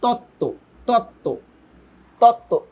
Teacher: এই তয় তয়ের সাথে বফলা আছে, কই বফলার তো কোনো উচ্চারণ হলো না